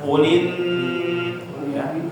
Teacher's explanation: Nun bertasdid bacaannya harus ditahan ya